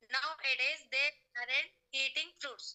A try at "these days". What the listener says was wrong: They are not mistakes, but pronunciation problem. This is these days. These days. This కాదు these days. Okay, next ఇక్కడ guys ఎస్ అని చెప్పాను కదా, ఎస్ place ఎస్ అని ఉంది కదా, ఇక్కడ జడ్ ప్రొనౌన్స్ చేయండి పలికేటప్పుడు. దీస్ డేస్, not డేస్. దీస్ డేస్, దీస్ డేస్, దీస్. ఇక్కడ కూడా జడ్ వస్తుంది సౌండ్, ఇక్కడ జడ్ రావాలి. దీస్ డేస్.